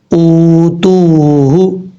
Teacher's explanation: حمزہ کے بعد جو واو ہے یہ واو بھی مدہ ہے، تا کے بعد جو واو ہے یہ واو بھی مدہ ہے. ایک الف کی مقدار لمبا کر کے پڑھیں گے. واو ساکن سے پہلے پیش ہو تو واو مدہ ہوتا ہے.